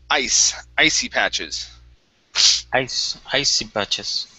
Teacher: this C is an unvoiced S